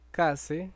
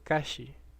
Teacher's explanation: en el contexto de la vocal anterior cerrada tenemos que estas consonantes finales de la raíz se palatalizan y pasamos de tener kase a tener kashi.